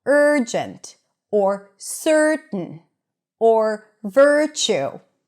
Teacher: But for people who have some experience in learning pronunciation, here's something interesting about the ers and stir. The ers and stir is always positioned as the primary stress of the word.